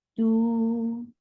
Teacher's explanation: For dhamma, circle your lips. Make it two counts long vowel because this is part of this combination.